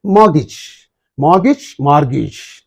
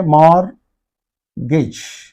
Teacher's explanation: so R is silent in the British English but not in the American